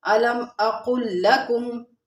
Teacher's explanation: قاف کے ساتھ ہم نے لام کو ملا کے پڑھنا ہے۔ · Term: لام مشدد